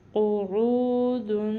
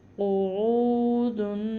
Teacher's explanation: عین کے تلفظ کا بہت خیال کرنا ہے. اس کو عین نہیں پڑھنا، منہ سے نہیں ادا کرنا، حلق سے ادا کرنا ہے. قو، عین کے اوپر پیش ہے، آگے واو ساکن آ رہا ہے، یا ایسے کہہ لیں کہ واو ساکن ہے، پیچھے عین آ رہا ہے پیش کے ساتھ.